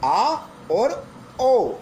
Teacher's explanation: जिनके उच्चारण में मुख द्वार पूरा खुल जाता है उन्हें हम विवृत स्वर कहते हैं। आ और औ ये विवृत स्वर के रूप है।